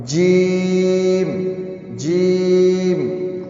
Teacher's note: جیم کہتے ہوئے ناک میں آواز نہیں جانی چاہیے